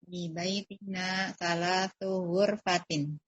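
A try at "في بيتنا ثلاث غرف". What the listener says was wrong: Ini saya dengar ada yang baca ghurfah. Salah, ghuraf yang betul ya. Salasu ghurafin, bukan ghurfatin. Fi baitina salasu ghurafin.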